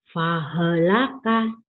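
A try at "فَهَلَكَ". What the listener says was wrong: Sama, fahelaka. Jangan fahelaka. Jangan ada E ya. Dalam Quran itu tidak ada huruf E.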